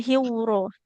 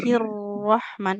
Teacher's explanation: Hirro tidak boleh seperti ada wau sukunnya.